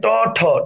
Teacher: ঠতে বাতাস বেশি, তার মানে এটা হচ্ছে মহাপ্রাণ ধ্বনি